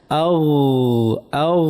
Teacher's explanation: গয়নের আওয়াজটা ভারী হবে, না আবার ভারী হবে না, পাতলা হবে।